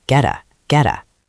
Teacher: Get ends in T. A is a vowel, so that T becomes a flap T.